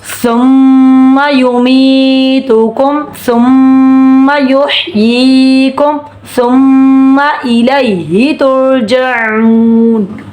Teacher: سا نرمی والا اور اس میں نرمی ہوگی, زبان دانتوں کے کناروں پہ لگے گی. میم مشدد ہے, ایک الف کے برابر غنہ ہوگا.